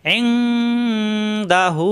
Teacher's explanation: নুন সাকিনের পরে আসছে দাল ইকফা গুন্না